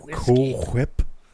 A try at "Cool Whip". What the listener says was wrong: Cool whip. You don't you don't pronounce the L. It's Cool whip.